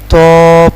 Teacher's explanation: زبان کی نوک اور اوپر والے دانتوں کی جڑ سے ادا ہوتا ہے